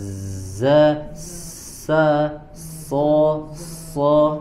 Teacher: sifat sofir dari ujung lidah ke dinding gigi seri bagian bawah.